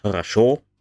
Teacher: the unstressed syllables have been reduced and in the case of russian this is often a movement towards the lower parts of the mouth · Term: vowel reduction